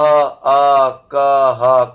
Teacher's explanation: अ क ह कहां से बोले जा रहे हैं ये कंठ से बोले जा रहे हैं